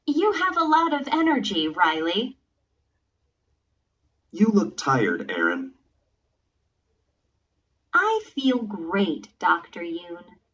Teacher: Notice these statements with direct address. There is usually falling intonation and a pause before the name.